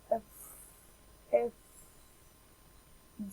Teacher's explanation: The vocal folds vibrate. And the sound F is voiceless because the vocal fold don't vibrate.